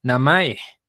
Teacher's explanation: Entonces, una persona que habla español ve esto y dice namae. O sea, la dice baja, alta, baja.